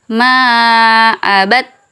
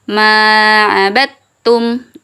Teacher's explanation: huruf da-nya sudah tidak dibaca, dia langsung masuk ke huruf ta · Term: idgham